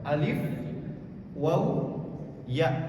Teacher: Itu termasuk kepada hurufnya al-jawf. Tempat keluarnya adalah rongga mulut. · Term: huruf mad